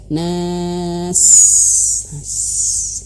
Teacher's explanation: Dan ketika huruf sin itu harus hamas, mengeluarkan angin.